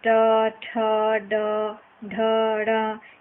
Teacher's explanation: यह सब टवर्ग के अंतर्गत आता है, जिसका उच्चारण मूर्धन्य से किया जाता है